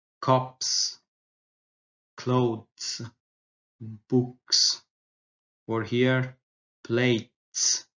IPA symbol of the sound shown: s